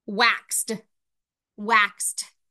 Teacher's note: And that makes sense that waxed says t at the end because when I hold my hand to my throat and make the x sound, I can tell it's voiceless